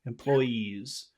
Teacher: It's a very long vowel sound at the end of that word